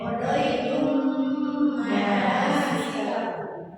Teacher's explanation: Mimnya itu dibaca disertai dengan gunna. Ada di tangan dua harokat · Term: idgham mislain